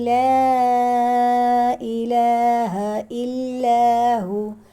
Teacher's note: لا پہ مد متصل نہیں ہے بلکہ مد منفصل ہے، حمزہ دوسرے کلمے میں ہے